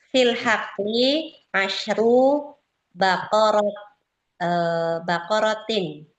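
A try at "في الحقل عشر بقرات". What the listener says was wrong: Bagus. Baqarah panjang mu'annas jamak.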